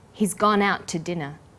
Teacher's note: The t sound is pronounced only once.